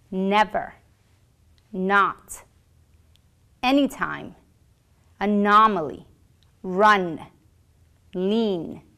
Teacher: This sound takes place in the nasal cavity. The tongue is firmly pressed against the ridge inside of the mouth. There is air flowing through the nose. And your vocal folds will vibrate.